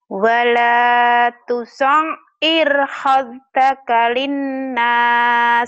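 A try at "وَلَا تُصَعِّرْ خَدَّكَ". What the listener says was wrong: Bukan khod ya. Ini kho. Wala tusair kho khaddaka. Kho khaddaka lagi.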